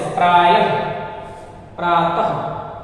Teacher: विसर्ग का उच्चारण जो है वो व्यंजन में जो है ह वर्ण की तरह होता है, ह।